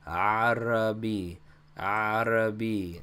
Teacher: And the first letter is an Ein, which, like I said, sounds like A, but it is in the back of your throat